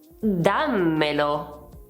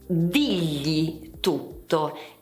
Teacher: c'è il raddoppiamento della consonante finale dei pronomi